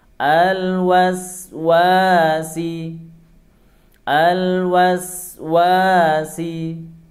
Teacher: ada Alif sebelumnya fathah dibaca 2 harokat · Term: Mad 2 harokat